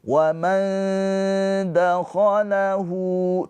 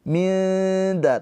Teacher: nun sukun dibaca dengan samar ditahan dua harakat. Lidah kita mendekat ke makhraj huruf dal. Minza tapi jangan ditempelin. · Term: ikhfa hakiki